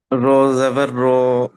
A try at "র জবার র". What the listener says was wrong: র জবার র বলে টান হবে না